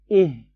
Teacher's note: i sama ha ini makhrajul hurufnya sama, tempat keluarnya hurufnya tuh sama-sama ditenggorokan bagian bawah.